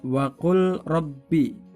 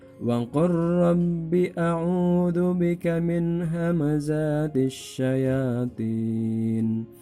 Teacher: Jadi lamnya hilang, masuk ke dalam huruf ra. Wa qur rabbi, tidak dibaca wa qul rabbi.